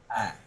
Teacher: Hamzah tempat keluarnya adalah dari pangkal tenggorokan ya. Pangkal tenggorokan ya di pita suara ya.